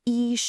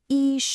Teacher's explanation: It's two first tones in a row, so they're both high and flat.